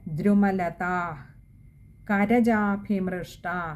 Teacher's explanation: അവിടെ രണ്ടിടത്തും ദീർഘവുമുണ്ട് വിസർഗവുമുണ്ട്. അപ്പോൾ വായിക്കുമ്പോൾ പകുതി ഹകാരത്തിൽ വായിക്കുകയും വേണം, അകാരം നീട്ടിയെടുക്കുകയും വേണം.